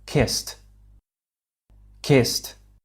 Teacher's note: a d sound which is a voiced sound as well however as the final sound of the verb kiss is unvoiced this means our vocal cords don't vibrate the regular past ending doesn't vibrate anymore